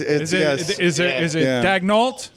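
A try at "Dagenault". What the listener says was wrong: Oh, there's a T. T is not silent.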